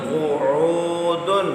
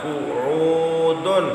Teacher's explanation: عین حلق کے وسط سے قعو نہیں پڑھنا، عین کو واضح کرنا ہے